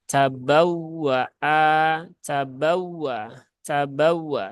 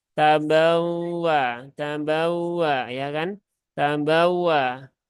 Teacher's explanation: huruf waw yang bertasydid itu cara membacanya adalah dengan cara an-nabr ya, dengan cara an-nabr yaitu dengan cara diberikan penekanan sedikit